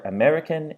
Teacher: American, it ends in the lenis nasal n, so it's followed by the lenis z.